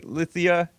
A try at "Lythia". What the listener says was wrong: No, it's a long E. Lythia.